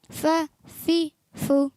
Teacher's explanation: ऊपर वाले दांतों के किनारे और नीचे के तर हिस्से से, नीचे वो के होंठ के तर हिस्से से, निचले होंठ के तर हिस्से से।